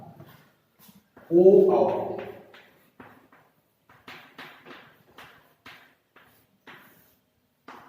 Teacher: ओ कंठ ओष्ठ से उच्चरित होता है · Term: कंठोष्ठ